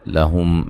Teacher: میم ساکن کا یہاں اظہار ہے، ٹھیک ہے، غنہ نہیں کریں گے